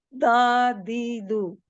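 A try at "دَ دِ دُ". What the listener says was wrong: Jangan sebut da, di, du. Bahasa Melayu di kita dia kena lelangit. Saya tak nak dia kena lelangit. Anda jatuhkan sikit, kasih kena gusi gigi atas.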